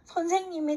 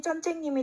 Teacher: 시옷이 그다음에 쌍지읒으로 대치되었다.